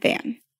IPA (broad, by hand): fæn